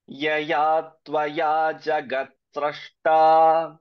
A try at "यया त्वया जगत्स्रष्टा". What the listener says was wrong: Here it has to be pronounced only as Srashta and not as Srishta.